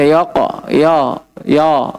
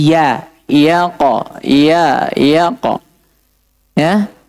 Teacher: Yaqo ini ya tipis qof tebal. Jangan terpengaruh ya dengan tebalnya qof. Dan jangan terpengaruh qof dengan tipisnya ya.